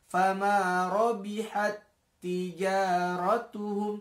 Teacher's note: Karena ini masuk dalam kategori idgham mutamatsilain. Taknya, tak mati ini masuk ke dalam tak berikutnya sehingga tidak perlu dibaca.